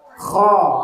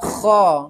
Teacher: Cara bacanya bukan ho ya, tapi ho-nya itu ada suara getaran di situ. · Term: huruf kho